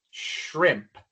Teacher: Se sostiene más el flujo de aire al pronunciar la SH. Shrimp. Pero igual tenemos que apuntar la lengua hacia atrás inmediatamente después para pronunciar la R.